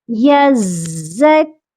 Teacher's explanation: یا زا زبر یز، زا کاف زبر زک۔ اب دیکھیں زا مشدد تھا، اس کو دو بار پڑھنا تھا، لیکن جب یز کہا اسی یز کے ساتھ ہم نے زک کی جوائننگ کر دی۔